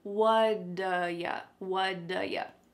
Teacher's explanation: It's called a flapped T and it just rolls off your tongue in a smooth way.